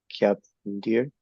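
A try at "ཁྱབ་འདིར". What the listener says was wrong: Kyam, kyam deer. It's an exception. Kyam deer. Yeah, with an M. Because it's a B. pa, pa, and ma all go together. Lip sounds.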